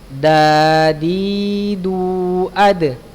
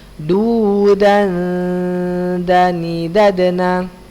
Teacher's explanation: Dal, to dan ta sama ya letaknya punggung ujung lidah pada posisi pangkal dua gigi seri atas. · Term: huruf dal